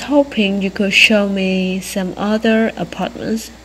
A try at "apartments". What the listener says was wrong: Apartment. Apartment. Nhưng mà em cảm giác là bạn không bật được hết cái hơi ra mà cứ bật giữa chừng của một tí. Apartments.